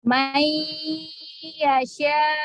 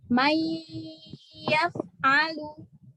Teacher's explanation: Bi artinya dengan gunnah, dengan dengung. Tahan 3 harokat ya.